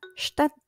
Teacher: T di belakang huruf D harus terdengar ya.